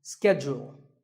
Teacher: In American English this is schedule the first syllable is SK and the second is Jewel